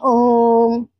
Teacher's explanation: प्लुत स्वर इन स्वर वर्णों को बोलने पर दीर्घ स्वर से दुगना समय लगता है। उसे प्लुत स्वर कहते हैं।